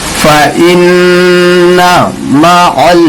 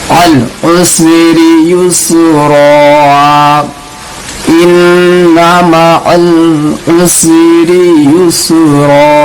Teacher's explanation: عین کو لام سے ملانا، الف کو نہیں پڑھنا ہے.